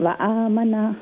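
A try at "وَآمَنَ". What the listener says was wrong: Very good.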